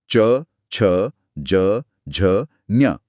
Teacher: ओ हाँ, जीभ पैलेट को टच करती है। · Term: च वर्ग